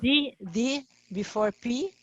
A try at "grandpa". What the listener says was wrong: No, it's well, if you say grandfather, yes, but grandpa, no. Grandpa is just a familiar way. Yeah, oh, you can write with the P, you can write with the D, grandpa, okay?